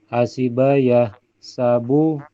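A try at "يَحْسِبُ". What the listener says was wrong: Fi'il mudhari'nya bukan yahsabu tapi yahsibu.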